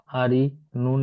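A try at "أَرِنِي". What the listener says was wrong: কান হবে না? নুন ইয়াজের নিয়ে কত ইয়া মাদ্দা ভাই, কান দিচ্ছেন না কেন? নুন ইয়া সাকিনের গাইনে জের। আ- আরিনি।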